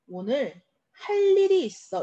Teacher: 자, 한꺼번에 발음할 때 여기 빈자리에 니은이 들어가고 리을을 만나서 유음화가 일어났기 때문에 니은이 리을로 발음될 수도 있습니다.